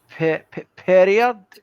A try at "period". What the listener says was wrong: Period. Yeah, more D. Period.